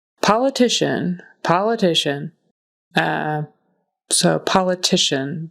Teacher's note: the syllable stress is on the next to the last syllable